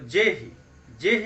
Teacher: जैसे एक चौपाई है कि जेहिकर जेहि पर सत्य सनेहु, सो तेहि मिलहि न कछु संदेहु। तो जेहि, जेहि में जे का उच्चारण जल्दी हो रहा है, यह ह्रस्व हो जाएगा।